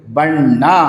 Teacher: ನಕಾರವನ್ನ ಉಚ್ಚಾರ ಮಾಡುವಾಗ ಅಲ್ಲಿ ಹೆಚ್ಚು ಪ್ರೆಸ್ ಮಾಡಿ ಹೇಳ್ತೀವಿ ಒತ್ತುಕೊಟ್ಟು ಹೇಳ್ತೀವಿ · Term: ಒತ್ತಕ್ಷರ